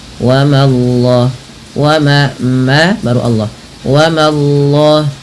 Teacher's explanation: Langsung Allahnya tebal tapi memanya tipis